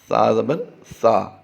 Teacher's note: یاد رہے سا زبر سا پڑھنا ہے ہم نے، سا کی آواز نہ آئے، تو سا زبر سا نہیں ہوتا، سا زبر سا، بغیر سیٹی کے اسے ادا کرنا ہوتا ہے